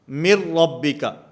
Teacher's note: میم کو را کے ساتھ ملائیں گے، درمیان میں جو نون ساکن ہے یہ ختم ہو جائے گا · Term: ادغام بلا غنہ